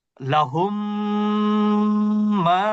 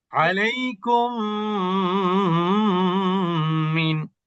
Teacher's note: আর যখনই তাসদিদ দিবেন, তখন প্রথম সাকিন আলা মিমটা পড়া হবে না, কারণ সাকিন থেকে তাসদিদের পাওয়ার বেশি। এই জন্য সাকিন যুক্ত মিমের আগের অক্ষর তাসদিদ যুক্ত মিমকে কানেক্ট করবে এবং গুন্না সহ পড়তে হবে। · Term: মিলিয়ে পড়া